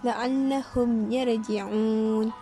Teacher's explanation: Izhar syafawi, cara bacaannya ialah dizahirkan tanpa dengung.